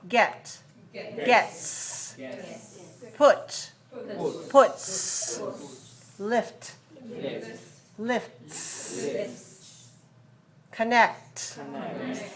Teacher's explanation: we have some words that end with voiceless sounds. Therefore, the S is pronounced S, which is also voiceless.